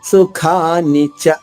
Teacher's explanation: సు సాకి ఉకారము, ఖాకి దీర్ఘం, మహాప్రాణి ఖ, సుఖాని చ. నచ రాజ్ అంటే అక్షరానికి మధ్యలో దూరం ఎక్కువ ఉన్నా గానీ నా చ రా అలా పలకూడదు.